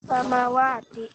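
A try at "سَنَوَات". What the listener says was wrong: Bukan samawatin, sanawatin. salah ucap, bukan samawat. Yang benar sana, pakai nun. Sanawatin.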